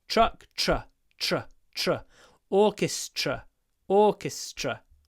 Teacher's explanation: Remember T-R is pronounced ch, tr, tr. So you get the same sound you get in truck.